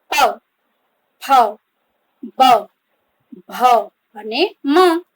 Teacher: તો આ જે વ્યંજનો છે એ જ્યારે બોલીએ છીએ ત્યારે આપણા હોઠ, બંને હોઠ ભેગા થાય છે, એકબીજાને અડે છે. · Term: ઓષ્ઠ વ્યંજન